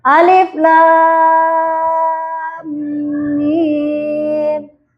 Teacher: Setelah huruf mim bertasydid, maka hukum bacaannya mad lazim musaqqal harfi. Bukan 2 harokat ya nak ya, 6 harokat. Harus dibaca 6 harokat.